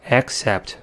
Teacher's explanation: The second C says S because it's followed by E. And the vowel in the first syllable reduced to the first schwa sound because it's in the unstressed syllable